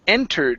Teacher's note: the word entered with the stress at the very beginning